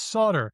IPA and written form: sodɚ (SOLDER)